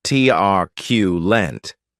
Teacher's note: this word has 3 syllables, with the stress on that first syllable. Keep in mind that it is pronounced like you're saying the letter Q, truculent.